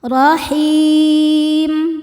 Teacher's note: roho dibaca tafkhim karena berharakat di atas yaitu fathah. Dibacanya tebal.